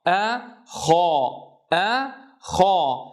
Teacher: تأملوا كيف يتجه الصوت نحو قبة الحنك حين ننطق بالخاء